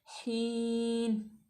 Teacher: हीन, ठीक है। याय या साकिन माकबल मकसूर, तो याय मद्दा होगी, इसको हम लंबा करेंगे